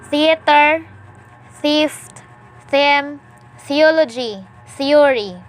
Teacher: Voiceless dental fricative. Initial.